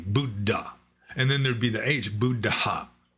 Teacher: in actual correct poly the two ds would be pronounced distinctly